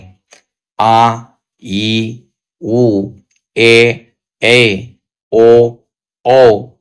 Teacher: इनके उच्चारण में ह्रस्व स्वर की अपेक्षा दुगना समय लगता है। अर्थात दो मात्राएं लगती हैं। उसे दीर्घ स्वर कहते हैं।